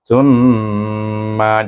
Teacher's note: ta itu digabungkan dengan mim yang bertasdik mim bertasdik kena baca dengan ghunah wajibul ghunah dua harakat jadi suku kata TM itu dibaca dengan wajibul ghunah tumma jangan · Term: wajibul gunnah